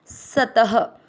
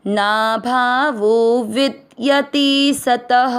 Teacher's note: स त दोनों अक्षर पूरे दोनों में अ मिक्स करेंगे, सत त में अ की मात्रा तो विसर्ग को पढ़ेंगे ह